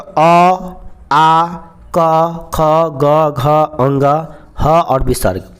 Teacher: कंठ से उच्चारण होगा, मतलब कि जीभ जो है ना कंठ से स्पर्श करेगा। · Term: कंठ वर्ण